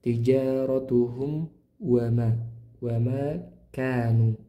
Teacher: Mim sukun dibaca jelas karena bertemu dengan huruf wau ya.